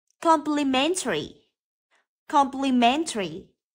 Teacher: từ complimentary trọng âm rơi vào âm thứ ba